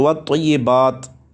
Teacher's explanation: اگر آپ نے وقف کرنا ہے تو والطیبات پڑھیں گے، تا ساکن ہو جائے گا آخر میں، اور اگر آگے ملا کے پڑھیں گے تو والطیبات السلام علیکہ ہوگا، والطیبات السلام علیکہ درست نہیں ہوگا، ٹھیک ہے۔